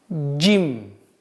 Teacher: Буква джим – взрывной звук, и поэтому нужно обращать внимание, чтобы она не была похожа на ж, такой звук отсутствует в арабском алфавите.